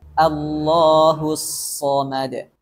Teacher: Bunyi bulatnya itu karena pangkal lidahnya terangkat, bukan karena bantuan bibir yang membunyikan bulat huruf shad ini. Kemudian tidak mengalir nafas dan bunyi sehingga sifat hams dan rokhawahnya tidak sempurna.